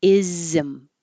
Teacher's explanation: And whenever you have the suffix ISM, it's really two syllables because there's an invisible I. You have to have some kind of space between making the Z and making the M. Because if we didn't, it would sound like isn't.